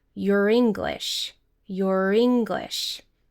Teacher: We're connecting the final R sound with the i sound.